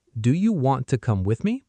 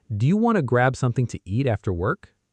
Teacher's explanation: do you compresses into something that sounds almost like ja or dia. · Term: reductions